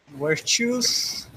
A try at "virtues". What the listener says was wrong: Yeah, let me just hear that V. Virtues. So once again, I guess that's just something to practice the difference between V and W, which is more pronounced in English.